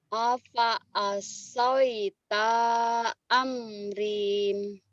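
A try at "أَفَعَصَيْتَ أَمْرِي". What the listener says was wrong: alfa asaita amri. Jangan amrin, amri. Alfa asaita amri.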